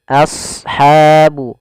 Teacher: ha lembut tipis, ada mad tabi'i, fathah ketemu alif